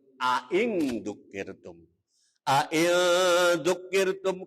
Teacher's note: Makhrajnya hamzah di tenggorokan di ujung, jadi mangap.